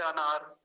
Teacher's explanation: बिल्कुल बिहार में तो ओ बोला जाता है ओ से अनार ऐसे कहा जाता है तो वो नहीं बोलेंगे क्या बोलेंगे अ और इसके साथ कार